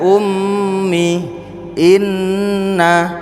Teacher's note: Kalau ada nun tasjid itu ditahan, ada mim tasjid sama nun tasjid itu ditahan